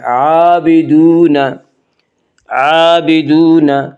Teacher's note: واو مدہ کو 1 الف کے برابر کھینچ کر پڑھیں گے۔